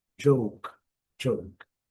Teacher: A letra J sempre vai ter um D. Pode colocar como um D imaginário.